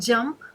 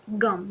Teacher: So the front j is produced in or realized as g, which is produced in the back, in the posterior or the dorsal area.